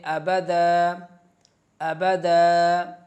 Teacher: دو زبر کی تنوین کو الف مدہ میں بدل کر پڑھتے ہیں